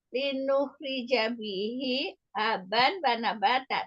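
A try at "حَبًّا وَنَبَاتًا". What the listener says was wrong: Ya, ya, habannya itu di idgham biguna, habau wa nabata.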